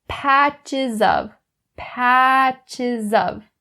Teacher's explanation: That z is brought over to of.